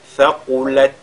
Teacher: Saqulat. et vous lisez ce ta comme al-qala, non, il faudra plutôt le lire avec al-hams. Donc, thaqulat, comme ça.